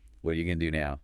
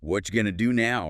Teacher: What are you became really short, like whatcha.